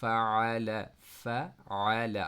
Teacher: آپ کی آواز سٹاپ نہیں ہو رہی، بلکہ آپ کی مڈل تھروٹ سے عین کی آواز جو ہے وہ ادا ہو رہی ہے